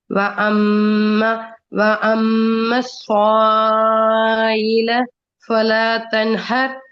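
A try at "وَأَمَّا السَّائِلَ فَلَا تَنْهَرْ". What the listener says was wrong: அதுல சாயில என்று நின்று போக கூடாது.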